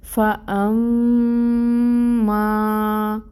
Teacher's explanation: فا میں ہمز ہے اور فتح کی حرکت ہے، فا پہ 1 کاؤنٹ ادائیگی ہوگی، حمزہ کے اوپر فتح 1 کاؤنٹ ادائیگی ہوگی، میم مشدد ہے، غنہ ہوگا 2 حرکت کے برابر